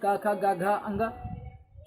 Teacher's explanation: तो आप भाई याद रखेंगे का से कंठ, तो कंठ से कौन से बोले जाएंगे, कंठ से का वाले बोले जाएंगे